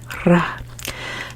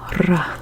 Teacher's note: It isn't a severe roll, kind of like in this isn't like a severe throat sound. So it is slightly rolled, not severely rolled. So it's a r sound, ra. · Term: gentle roll